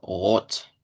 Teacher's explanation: Rot es con R uvular, una O larga como del español y una T